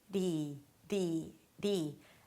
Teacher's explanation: Flap T and then a high E